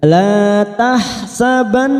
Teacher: nun yang bertasdid gunna musaddada kita dengungkan dan kita tahan selama 3 harokat.